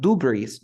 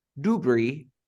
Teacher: I don't pronounce the S because the s in this word is silent